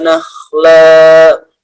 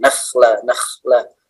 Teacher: Kha agak di tenggorokannya